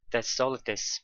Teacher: All is the most stressed word here.